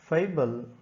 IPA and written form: ˈfeɪ.bəl (FABLE)